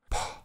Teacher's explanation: P is normally aspirated, which is a puff of air as the sound is released. This would make a candle flicker. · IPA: [pʰ], /p/